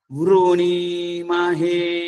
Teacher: అక్కడ వ పైన సరితం ఉంది వృణీమహే వం పైకి తీసుకెళ్ళాం